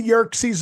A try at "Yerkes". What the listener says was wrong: It's Yerkes. There's no Z. Yerkes.